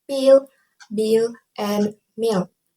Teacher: when we produce a p b and M we articulate by bringing both lips together